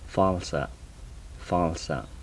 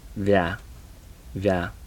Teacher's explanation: These are the labial dental fricatives.